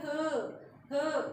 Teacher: काकल्य ध्वनि है। ये इसकी ध्वनि जो है हमारी ह काकल से आती है।